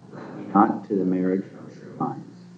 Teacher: an unstressed followed by a stressed syllable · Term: iambic pentameter